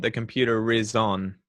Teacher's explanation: i won't say the r unless there's a vowel after it